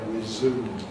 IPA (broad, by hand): rɪˈzuːm